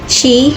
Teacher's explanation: These are both alveolar fricatives with airflow through a narrow channel behind the alveolar ridge.